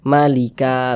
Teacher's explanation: Dipanjangkan 2 harokat juga panjangnya. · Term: mad iwad